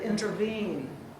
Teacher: An anapest is 2 unstressed syllables followed by one stressed syllable, as in intervene.